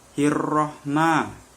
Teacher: huruf mim berharokat fathah bertemu dengan alif yang dibaca 2 harokat panjangnya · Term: mat asli